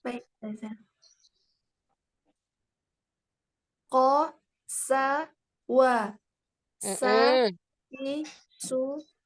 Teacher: Tapi sa ada sofir. Tambahan suaranya.